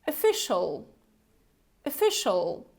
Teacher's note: a look at the beginning we don't have this o right we also have this schwa sound so this very gentle relaxed sound